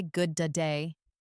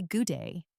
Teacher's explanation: Sometimes when a word ends with a consonant sound and the next word starts with the same or a very similar consonant sound that you don't pronounce it twice. You just hold the sound for a moment and then release it into the second word · For example, in good day, you don't say good da day, you say good day. The D sound is merged.